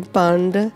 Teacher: the D at the end of the word is actually the tongue is on the roof of the upper palate of the mouth.